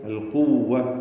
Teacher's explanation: ഉലിൽ ഖുവ്വതി ഇദ് ഖാല ലഹു ഖൗമു, അൽ ഖുവ്വ ഖാഫിന് നിസ്ബിയ തഫ്ഖീമുണ്ട്, ഇസ്തിഅലാൻ്റെ അക്ഷരമാണ്